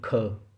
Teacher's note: लेकिन इसके अलावा अगर आप देखें, पहले के बाद हमने जो दूसरा नहीं लिया उसमें ख, तो लास्ट में ह का उच्चारण यानी हकार इसमें आ रहा है